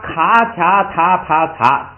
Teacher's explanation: 卡卡塔帕擦都是清辅音，都是送气的